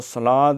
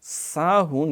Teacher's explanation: صلاد یہ صاد کی سیٹی موٹی ہے، ساہون یہ باریک سیٹی ہے